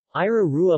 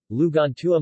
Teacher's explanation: The phoneme T, in certain possessive markers, such as tua, two, and tuo, becomes R when it comes after a stem ending in a vowel.